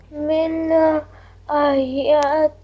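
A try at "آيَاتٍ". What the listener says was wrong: بیٹا آپ ایک کھڑی زبر ہے اس کو تھوڑا لمبا کرو. آیتن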